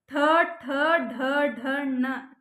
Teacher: ನಾಲಿಗೆಯ ತುದಿ ಹೋಗಿ ಮಧ್ಯಭಾಗದಲ್ಲಿ ಟಚ್ ಆಗುತ್ತೆ ಅದಕ್ಕೆ ಅವನ್ನ ಮೂರ್ಧನ್ಯ ಅಕ್ಷರಗಳು ಅಂತ